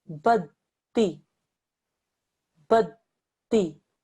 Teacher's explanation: I make sure that I press down on the dal because it's in fact two dals. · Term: mushaddad letter